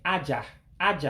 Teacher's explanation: I'm supposed to say it in a high tone, because Igbo is a tone language.